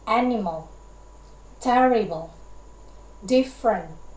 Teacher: comprised of one stressed syllable followed by two unstressed syllables